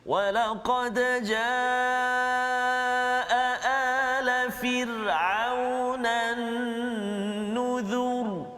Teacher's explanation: Tebal bunyi ra tu sebab huruf zal tu baris depan.